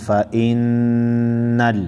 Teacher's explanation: زبر فا حمزہ نون زیر ان نون لام زبر نل فإنل نون مشدد ہے غنہ کریں گے